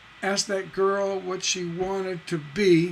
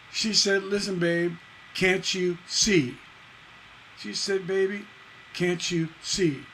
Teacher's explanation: they end on a masculine ending masculine meaning they end on a stress